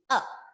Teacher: a okay and mostly it is produced by the letter a the shortest sound the shortest vowel sound is uh and that is called the schwa